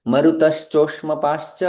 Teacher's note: दोनों का विसर्ग श में परिवर्तित हो जाएगा